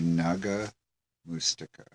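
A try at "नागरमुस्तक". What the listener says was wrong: Nagar mustaka. Which isn't Naga, it's Nagar.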